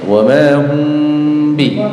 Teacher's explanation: samar dan mendengung ya, samar di bibir ya, dan mendengung ya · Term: Ikhfa syafawi